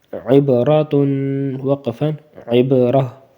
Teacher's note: را کے اوپر زبر ہی رہے گی، ٹھیک ہے نا، زبر ہی رہے گی تو اس کو موٹا ہی پڑھنا ہے